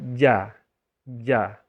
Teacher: difasih-fasihkan ja gitu Ja Kalau ja itu itu sudah ujung lidah dia bukan ujung lidah tetapi Tengah lidah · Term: huruf Jim